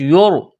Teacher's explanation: اگر را ساکن سے پہلے والے حرف کے اوپر زبر یا پیش آ جائے تو را کو موٹا کریں گے، اور اگر زیر آ جائے تو را کو باریک کریں گے۔ یہاں را ساکن ہے، را ساکن سے پہلے پیش ہے تو را کو موٹا کرنا ہے۔